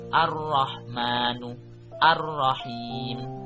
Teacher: ada al-syamsiyah atau cara membacanya asy-syamsiyah, berarti alnya tidak terdengar